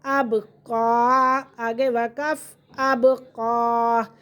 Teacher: با پہ بھی قلقلہ ہو رہا ہے